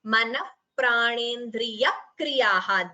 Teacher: So manaha, visarga followed by pra here, that is upadhmaniya.